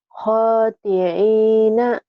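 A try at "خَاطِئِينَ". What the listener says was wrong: Khoti'i. Jangan ke ain ya. Ke hamzah. alif. Khoti'ina.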